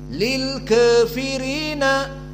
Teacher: qiraah Wars dibaca dengan taklil